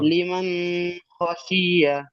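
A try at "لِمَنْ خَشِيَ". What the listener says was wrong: আচ্ছা, নুন সাকিনে গুন্না হয়ে যাচ্ছে, গুন্না হবে না, লিমান গুন্না হয়ে যাচ্ছে। লিমান খাশিয়া, লিমান খাশিয়া। হুম, ইজরা করেন দেখি, নুন সাকিনটা শুধু ইজরা করেন, সবগুলো ইজরা না, শুধু নুন সাকিনটা করেন।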